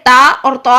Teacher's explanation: زبان کی جڑ باریک تا کے لیے نیچے رہے گی اور تا کے لیے زبان کی جڑ اوپر اٹھ جائے گی